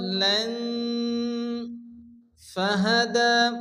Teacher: পরিমাণ টান দিয়ে পড়তে হয় ল্যান এবার লান গুণ হবে কারণ তানবিনের পরে হরফে ইখফার পাঁচ অক্ষরের মধ্যে ফা আসে এখানে এগালি পরিমাণ গুণ করে পড়তে হবে